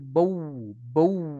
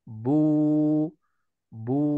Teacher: dah dengan wau jangan bau bau ya jadi wwya jangan dilafatkan cukup kita memanjangkan ya kadar harakat yang tadinya satu harakat itu menjadi dua harakat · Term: wau Mad